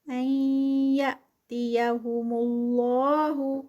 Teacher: نون ساکنہ اور پھر آگے یا، تو یہاں پر ادغام ہے اور ادغام ناقص ہے بدغنہ. یأتیہم اللہ، لفظ جلالہ اس سے پہلے پیش اور یہ بھی ہیوی ہوگا.